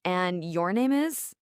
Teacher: You say it with that rising intonation at the end, like a question. "And your name is?" It sounds very polite.